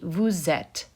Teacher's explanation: on the vu form you have this little liaison happening here so that your s of vu sounds like a z